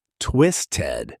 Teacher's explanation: that flap t pattern turns the ending into a soft did sound in fast speech